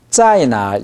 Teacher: 날에 신경 쓰느라고 짜이가 안 내려가요. 그러니까 한자 한자 합시다.